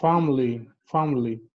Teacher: the letter i is not pronounced so this word has only two only two syllables not not